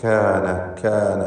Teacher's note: എല്ലാ അക്ഷരങ്ങളും ഇസ്തിഫാലിൻ്റെതാണ്, തർക്കീഖ് ചെയ്യുന്നു. ഖാന എന്നൊന്നും പറയേണ്ട, കാന, കാന എന്നാണ് പറയുക. കാഫാണെങ്കിൽ ഹംസ്, ഷിദ്ദ തുടങ്ങിയ സിഫത്തുകളൊക്കെ ഉള്ള അക്ഷരവുമാണ്, ഇസ്തിഫാലിൻ്റെയും ഹർഫാണ്.